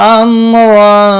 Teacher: میم ساکن کے بعد را آیا ہے, یہاں پر اظہار شفوی ہوگا, غنہ نہیں کریں گے